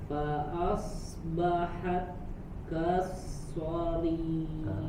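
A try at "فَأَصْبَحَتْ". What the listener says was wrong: So-nya masih yang so kedua, so masih manyun. Nah, kemudian di huruf ta-nya ada hams ya, ada hams keluar kan udara, anginnya.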